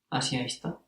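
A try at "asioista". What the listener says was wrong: it would be Asiaista, but we have seen how the A as a last letter doesn't want to stay as A if you add ending. It's changed to some other vowel.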